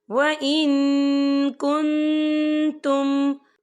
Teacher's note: نون ساکن کی آواز کو ناک میں چھپائیں گے